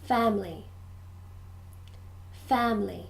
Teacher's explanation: 3 syllables, but usually when we're speaking, we just say 2. Family. Family.